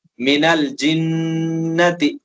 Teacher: نون مشدد ہے، گننا ہوگا